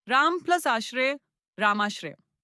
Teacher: यहां अ और आ मिलकर आ बन गए हैं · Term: स्वर संधि